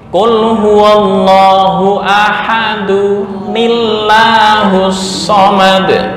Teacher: Ketika disambung, nah, ini tanwin bertemu dengan hamzah wasol, tinggal ini tambah nun.